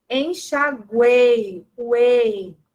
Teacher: semivogal U, vogal E, semivogal I. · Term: tritongo